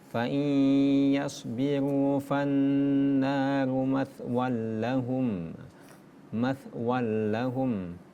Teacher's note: fathatain bertemu dengan huruf lam yang ada tasdid, maka dibaca dengan idgham bila gunnah. Idgham memasukkan tanpa dengung dia.